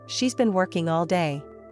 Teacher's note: Notice how the stress falls on working and day. The other words are said more quickly and lightly. That's the natural English rhythm.